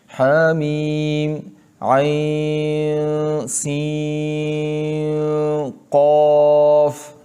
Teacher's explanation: عین اور سین دونوں کے درمیان میں بھی خیشوم آواز میں جائے گی، آواز خیشوم میں جائے گی